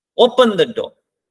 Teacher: देखो डोर में आते हुए हमारी आवाज डाउन होगी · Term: फॉलिंग टोन